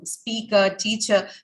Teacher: represents whenever you have an r combination an er combination uh the actual um sound occurring at the end of it is this schwa